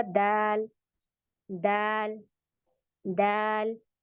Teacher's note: दाल बारीक लेटर है दोनों जबान स्ट्रेट रहेगी कोई उठेगी नहीं